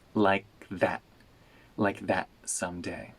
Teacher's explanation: Before the S, the T turns into a glottal stop.